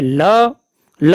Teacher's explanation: ल पार्श्विक व्यंजन जिसके उच्चारण में आवाज जीभ के पार्श्व अर्थात बगल से निकल जाए